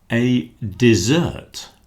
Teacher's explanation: Dessert is the sweet dish that you have at the end of a meal. Dessert with the stress on the second syllable.